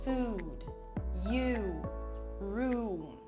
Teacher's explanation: The lips are more rounded. Ooh, I gotta push my lips forward.